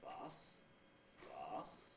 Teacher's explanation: It was in fact going up, so that was a low rise.